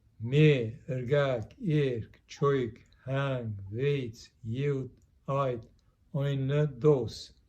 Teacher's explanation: produces an unaspirated, unreleased T in the number for 7, and also in the number for 8. This sometimes happens in final position or before another consonant.